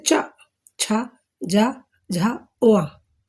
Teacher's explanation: चा वर्ग वालों को हम तालु से बोलेंगे, तालु से।